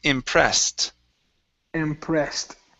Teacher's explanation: here we have the ed ending which will sound like a t